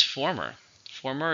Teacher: how many syllables former two stresses on the first